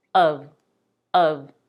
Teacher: if stressed is the cup sound the same as in the word cup of of but if of is unstressed the vowel is reduced